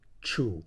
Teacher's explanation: Chu low tone means rain Chu is low tone a t Changed by raising the tongue